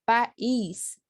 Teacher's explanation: é feita junta e a gente tenta meio hiato que eu encontro de duas vogais pronunciadas em sílabas separadas